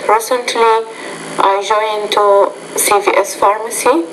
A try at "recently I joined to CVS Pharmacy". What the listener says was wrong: So don't end your statements with rising intonation. That's not going to help your TOEFL score. You need to end those statements with falling intonation.